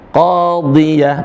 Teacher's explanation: ingat lagi huruf dha tetap dibaca tebal.